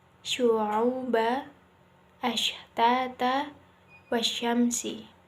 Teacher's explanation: Sifat tafashi adalah menyebarkan, sedangkan menurut istilah yaitu tersebarnya nafas dan suara di dalam mulut ketika membunyikan huruf shin